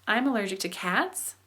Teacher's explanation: intonation is generally higher throughout with a brief drop near the end and a rise at the and then a rise at the end, okay?